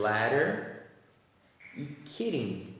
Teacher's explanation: Quando ele está entre two vowel sounds, ele vai fazer o som de R em português. E aí o som do T e do D ficam muito parecidos, quase imperceptível a diferença